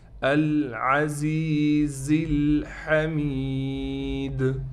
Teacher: باللہ العزیز، 2 زا ہیں، دونوں زاؤں کو سختی کے ساتھ نکالنا ہے. اس زا کے بعد یا ہے تو لہٰذا اس زا کو ہم ایک الف کی مقدار کھینچیں گے